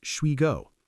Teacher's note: Or shall we go often becomes shwe go.